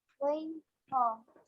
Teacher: 2 letters we read from the top part of our throat, that is ghain and kha